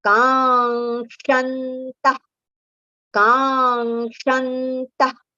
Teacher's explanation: ga is a nasal sound. So towards the end of ka we have to prolong, and then ga sound will come.